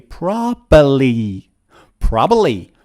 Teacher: native speakers remove the second B